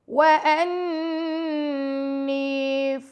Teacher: نون پر تشدید ہے تو یہاں پہ ہم غنہ کریں گے، ساتھ اس کے یا مدہ ہے تو 2 سیکنڈ کا اس کو ٹائم دیں گے.